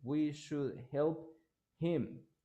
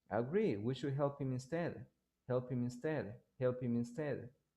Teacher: you have like uh a linking sound over there between p and m you don't pronounce the h but if you say it slowly you pronounce the h good · when you have him next to a consonant the h is not pronounced